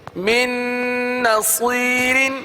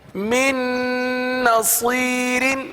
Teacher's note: دیکھیے گنہ کریں گے نون پر اور من کا جو نون ہے وہ دوسری نون میں مل جائے گا، مدغم ہو جائے گا